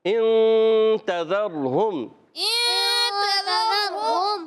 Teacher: نون کو چھپا کر ادا کرتے ہیں، ناک میں آواز لے جاتے ہیں، ایک الف کا غنہ بھی کرتے ہیں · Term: اخفا